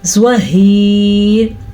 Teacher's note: را باریک پڑھنی ہے کیونکہ وقف کی وجہ سے ہم نے را کو ساکن کیا. پیچھے دیکھا تو یا بھی ساکن تھا، اس سے پیچھے دیکھا تو ہا کے نیچے زیر تھی، اسی لیے را زیر کی وجہ سے باریک پڑھی جائے گی.